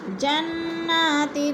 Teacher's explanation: جنات، تن میں اخفا، 2 زیر تنوین کے بعد تا حروف اخفا میں سے آگے تو ادھر اخفا کریں گے، آواز کو ناک میں چھپا کر پڑھیں گے۔